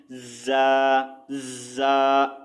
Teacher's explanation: اس کے بعد زا کی آواز جو ہے تھوڑی سی سخت اور باریک آواز ہوتی ہے، ٹھیک ہے۔ زا کی آواز جو ہے باریک سیٹی والی سخت ہوتی ہے، ٹھیک ہے، جیسا کہ زا ہلکی سی سیٹی کی آواز۔